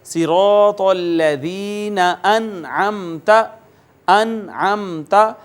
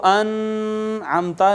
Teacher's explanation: اخفا نہیں کریں گے بلکہ یہاں پر بھی اظہار کریں گے، نون کو ظاہر کریں گے، آگے چلے جائیں گے، نون کے اوپر آواز چھپائیں گے نہیں، نون پر رکیں گے نہیں